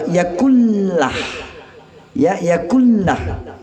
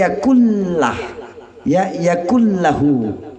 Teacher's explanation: Ada tadi kata memasukkan idgham. Jadi nun mati ini dimasukkan ke dalam huruf la, tidak boleh berdengung. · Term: idgham bila gunnah